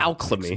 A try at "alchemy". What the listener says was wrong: It's silent L, you dumb cunt. It's alchemy. It's a silent L. It's Latin. It's a silent L.